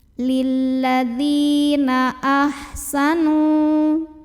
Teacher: Lilladzina ahsanu, nu mad tabi'i, karena ada waw sukun yang didahului baris dhammah, maka cara bacanya dipanjangkan nunnya 2 harokat